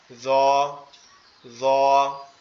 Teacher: জিহ্বার আগা সামনের দুই দাঁতের আগার সঙ্গে লাগবে।